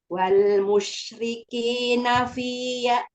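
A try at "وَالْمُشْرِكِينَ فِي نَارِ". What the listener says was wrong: Nanya pendek Umi. Nanya tidak ada. Wal musyrikina fi nari jahannam.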